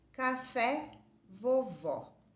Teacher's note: o acento agudo, ele tem um timbre aberto